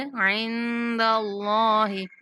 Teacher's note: اللہ کے نام کو پر کر کے پڑھیں گے